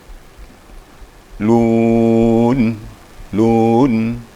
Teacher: Jadi harus dengar sengaunya sedikit, gunnahnya. Lun gitu. Diangkat lidahnya.